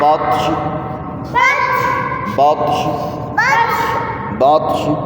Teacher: موٹے والے تا کے اوپر جب جزم آئے گی تو اس کو قلقلہ کریں گے، نرم کر کے پڑھیں گے، سختی سے نہیں پڑھیں گے.